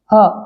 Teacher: ह कंठ के भीतर स्थित होता है। ह बोलेंगे तो आपको प्रतीत होगा कि ह कंठ के पास ही आपको महसूस होगा